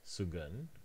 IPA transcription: sugʌn